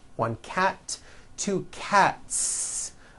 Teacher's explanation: Again, the S ending is unvoiced.